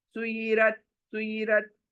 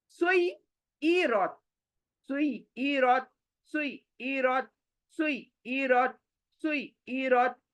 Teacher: मतलब एक ई की आवाज नहीं आती, जबकि दो आवाज आनी चाहिए। शद्दा का मतलब ही दो आवाज।